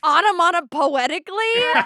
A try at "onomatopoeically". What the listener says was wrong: Or onomatopo without the T at the end.